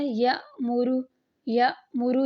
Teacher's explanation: ہم حمزہ ساکنہ کو پڑھتے ہیں، الف نہیں پڑھتے۔ الف جو ہے وہ خالی سپورٹ کے لیے ہے، حمزہ کے لیے خالی سپورٹ کے لیے ہے۔